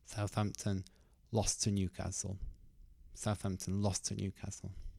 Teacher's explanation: you don't have to say both of those t sounds. You can cut one of them.